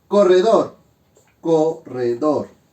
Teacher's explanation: Sílaba tónica en dor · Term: aguda